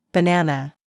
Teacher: in the word banana, the stress is on the second syllable, banana. If you put the stress in the wrong place, it can sound strange, even if your pronunciation of the letters is correct.